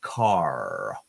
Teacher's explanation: with the R, our tongue curves back